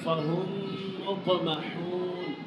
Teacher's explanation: میم ساکن کے بعد دوسری میم آ جانے کی صورت میں میم ساکن کو دوسری میم میں مدغم کرنا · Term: ادغام شفوی